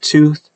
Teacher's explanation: the n lengthened the preceding vowel